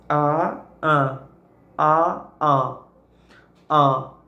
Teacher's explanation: no centro da boca a a abrimos abaixarmos o maxilar e direcionamos o fonema para o nariz para as narinas · ele está localizado no centro da boca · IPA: [ã]